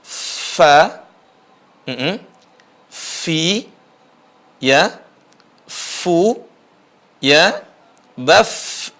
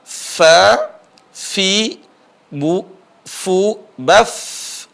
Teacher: ujung gigi seri atas bertemu dengan bibir bawah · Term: huruf Fa